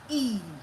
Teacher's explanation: So, you just All you need to do is to look at the shape of your lips when you are producing a sound. e Your lips are spread. Your lips are unrounded.